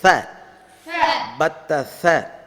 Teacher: ச நாக்கு, அது பல்லு கேப்லேருந்து காற்று வெளியே வரணும்.